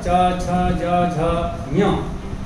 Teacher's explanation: इनका उच्चारण स्थान तालु है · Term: चवर्ग